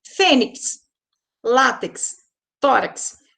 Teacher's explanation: palavras que a penúltima sílaba é mais forte e que terminam com X.